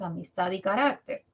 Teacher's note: mayor intensidad las otras dos tienen menos en relación con ella tat es la sílaba tónica tiene mayor intensidad que a y mis por lo tanto a y mis son átonas carácter rac tiene mayor intensidad que k y ter y por